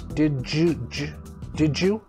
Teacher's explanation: we changed that to a j sound